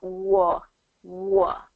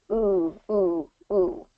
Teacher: good W sound where your lips are rounded w war war so it starts with the lips rounded and then it kind of um blossoms Out